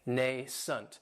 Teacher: this word has two syllables, and the stress is on that first syllable. It has the long A sound, nascent. That second syllable has that schwa, nascent.